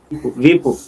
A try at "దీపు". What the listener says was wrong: దీపు వీపు కాదు, దీపు.